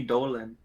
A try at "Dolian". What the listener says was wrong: It's not even Dolan, it's Dolian. An unnecessary syllable.